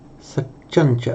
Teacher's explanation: It's called a palatal because the tongue is not against the teeth and it's not curled back retroflex. It's on the the the hard pallet just behind this cha.